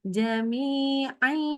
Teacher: Ai ya lebih panjang dengungnya. Dengungnya 3 harokat. Iyanya 2 harokat. Jadi dengungnya lebih panjang.